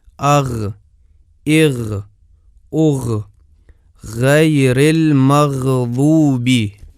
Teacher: ملاحظہ کریں کہ مخرج کھلا ہے، بند نہیں ہے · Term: غین کا مخرج